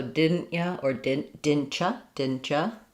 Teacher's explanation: Then the t and the ch become a y sound. You is a reduction. Often becomes just y.